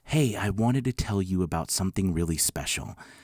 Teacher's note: it's got a breathy sound to it but more importantly it sounds sweet